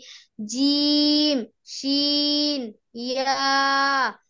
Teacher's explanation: জিহ্বার মধ্যখান তার বরাবর উপরের তালুর সঙ্গে লাগিয়ে